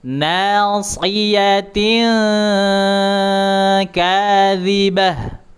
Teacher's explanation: Kemudian huruf kaf, huruf kaf, lidah pangkal dinaikkan ke atas, ya, dinaikkan ke atas, nyentuh langit-langit bagian yang keras